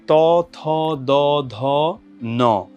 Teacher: সেটা হচ্ছে জিওভার যে সামনের অংশটা সেটা প্রসারিত হয় এবং যেই জিওভার অগ্রভাগ বা জিওভার যে আগা সেটা হচ্ছে ওপরের দাঁতের পাটির যে গোড়া সেই জায়গাটাতে যে স্পর্শ করে